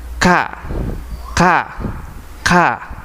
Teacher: pangkal lidah dan langit-langit mulut bagian tengah yaitu huruf Kaf